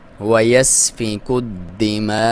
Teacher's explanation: واجب ہے، 3 سے 5 الف تک لمبا کر سکتے ہیں۔ دال کو دبا کے پڑھیں گے کیونکہ اس پہ شد ہے